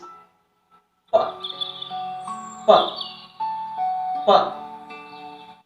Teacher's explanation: The upper lip and the lower lip are compressed, and when you speak out the words pa, the words comes out with an explosion. This is known as plosives.